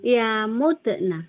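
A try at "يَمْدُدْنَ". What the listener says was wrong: Enggak. Mati, memnya mati. Kenapa du? Kenapa enggak da? yamdud? yamdud? Kenapa yamdud? Kenapa du? Karena mu ini harokat mu ini pindah ke dalnya itu. Ke sini nih.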